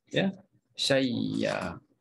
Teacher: Jadi ya yang pertama kita masukkan dalam ya yang kedua, maka bunyinya syayya.